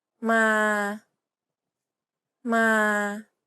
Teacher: The second tone is a midtone. It's pronounced in the neutral, comfortable part of your vocal range and is steady throughout.